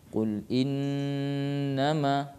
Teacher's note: nun dan mim yang keluar di hidung. Iya, makhrajnya itu kalau hurufnya sendiri, ya nun itu ujung lidah ketemu dengan langit-langit atas. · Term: gunnah